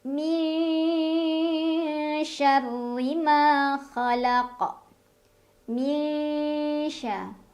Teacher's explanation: nun sukun dibunyikan dengan samar-samar ke huruf shin sambil dengung. Jadi artinya saat kita membunyikan nun sudah siap-siap ke makhraj huruf shin. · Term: ikhfa awsat